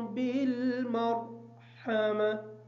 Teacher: بالمرحمہ کی جو را ہے اس را کو پر پڑھیں گے، ہا کو کلیئر کر کے پڑھیں گے، تا حالت وقف کی وجہ سے ساکن ہوگی۔